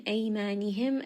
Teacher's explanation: this is going to be madd lin, madd lin madd one and a half. Ma this is going to be a two count madd.